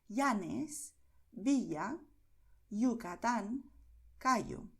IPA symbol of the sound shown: i